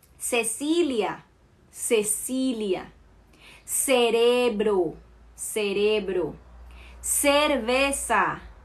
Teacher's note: uma pessoa da Colômbia vai falar o C com o som de S, ok? Quando ela está acompanhada com o E e o I.